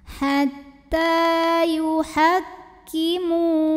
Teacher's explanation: Karena ada baris fathah tegak atau fathah panjang pada huruf ta. Maka cara membunyikannya ta kita panjangkan 2 harokat saja. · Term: mad tabi'i muqaddar